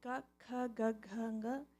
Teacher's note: it's coming from the source of your throat. It's a kantya.